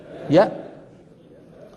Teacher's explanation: ان الهمزه حرف شديد مجهور شديد يعني لا يجري معه الصوت مجهور يعني لا يجري معه النفس ليه؟ لان الهمزه تخرج بغلق